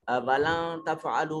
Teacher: وَلَن تفعلوا، یہاں یہ جو واو وَلَن تفعلوا میں نون جو ہے اس کو ہم اپنے مخرج میں چھپا کر، یعنی آواز کو تھوڑا سا ناک میں لے جا کر پڑھنے کی کوشش کریں گے